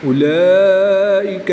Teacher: کھڑی حرکات کے بعد حمزہ اسی کلمے میں ہے تو یہاں پر مد متصل ہوگی. 3 سے 5 الف تک کھینچ کر پڑھیں گے